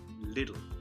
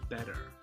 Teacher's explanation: In American accents, we move from, particularly if the T is in the middle of the word, we move from it being a T sound and actually into a D sound.